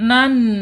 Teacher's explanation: Nah, di sini ada nun bertasid ya. Sifatnya gunah harus ditahan dua sampai 3 harakat.